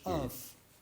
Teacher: if I'm Druze living in Beirut, which means that you're not surrounded by other Druze, you would pronounce the qaf as af, as a glottal stop